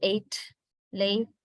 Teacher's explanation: So if we just talk about this regarding upper mid front vowel, In English, of course, it is pronounced more or less like a diphthong, little bit like a diphthong, unlike in French and Spanish